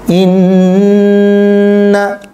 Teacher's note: এখানে ওয়াজিব গুণনা হবে। নুনের উপর তাসদিদ, পূর্বে জের এসেছে, হরকত এসেছে, কিন্তু নুনকে টানা যাবে না।